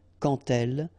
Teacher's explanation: you won't pronounce it like d to make the liaison, but you will pronounce it like t · when you will have this D, you will phonetically pronounce it like T